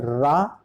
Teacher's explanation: रा प्रकमित व्यंजन है जिसमें जिह्वा नोक मसूड़े के समीप कंपन करता है।